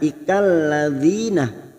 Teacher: Ikalladzina masuk kata alif lam samsiah. Ikalladzina kasrah bertemu ya sukun dua harakat.